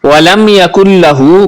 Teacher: میم ساکن کے بعد یا ہے، غنہ نہیں کریں گے